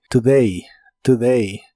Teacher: usar en el ejercicio usaremos la palabra today que significa hoy la o de esta palabra es un sonido que se llama shua en inglés puedes considerarlo como una u pero muy muy suave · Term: schwa